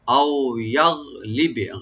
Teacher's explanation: গাইনে কলকলা হবে না, বাতে কলকলা হবে